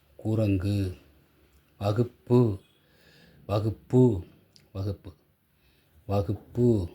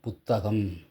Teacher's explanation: இங்க வர குரங்குக்கு இந்த கடைசிில வர கூ வந்து முழுமையா ஒளிக்காது. அப்ப ஒரே எழுத்தைதான் அதற்குடைய ஓசை குறைந்து ஒளிக்குமானால் அது குற்றியல் உகரம். உகரம் குறைந்து ஒளிக்குது.